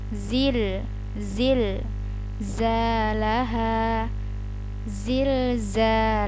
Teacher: Jadi huruf dza ini banyak banget sangat banyak anginnya